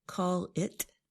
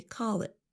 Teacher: What do you means what do you and our listeners should also notice that we don't really pronounce the letter t at the end of the phrase. Instead of saying call it, we say call it with a held t.